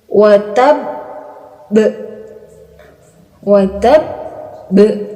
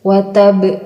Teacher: kita menyukunkan huruf ba, kemudian kita menahannya selama 2 detik, lalu kita pantulkan huruf ba-nya. Karena ini ba ini termasuk huruf qalqalah.